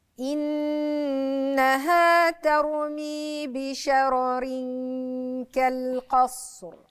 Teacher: الراء هنا عندي ساكنة قبلها مفتوح، فهتبقى مفخمة.